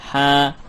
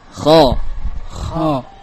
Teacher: Ha, ya, keluar, nah, datar. Namun kho keluar dan membentur suaranya ke langit-langit.